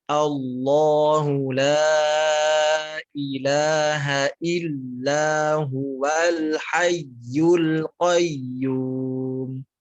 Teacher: ketika dia ada tanda tasdid, masing-masing ditahan 1 ketukan